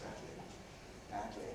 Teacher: Lateral release, badly, badly.